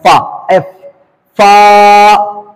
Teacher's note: ऊपर का दांत नीचे का होंठ मिलाए